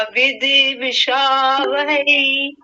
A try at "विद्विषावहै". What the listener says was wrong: ठीक है, विदवी नहीं, विद्वी, विद्वी, द आधा है।